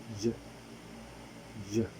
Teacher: According to voicing, it is voiced. According to the place of articulation, it is palatal. And according to manner of articulation, it is glide.